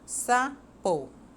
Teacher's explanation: Qual é a tônica? É o sa. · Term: sílaba tônica